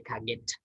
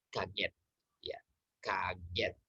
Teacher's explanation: The t sound is not aspirated